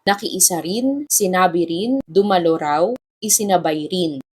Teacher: ang pagpapalit ng d patungo sa R ay nangyayari sa mga pang-abay o adverbs na din rin at daw raw